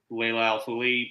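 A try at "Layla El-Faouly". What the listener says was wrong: very close. You just added an extra syllable. You're very close.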